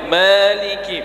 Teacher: mimnya jangan terlalu panjang, 2 harokat saja. Maliki, begitu.